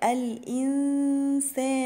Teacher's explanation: النون الساكنة وراها حرف السين هتبقى فيها غنة إخفاء، وغنة الإخفاء هنا هتبقى مرققة